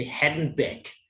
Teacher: most American English speakers do not pronounce the D in handbag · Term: segment deletion rules